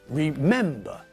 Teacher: remember has got three syllables but again the stress is not at the end of the word but in the middle